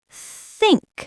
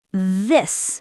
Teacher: The first one, think, is soft with air. It's called a voiceless sound. The second one, this, has vibration. It's voiced.